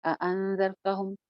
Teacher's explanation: इख़फ़ा आ गया, नून के बाद ज़ाल आ रहा है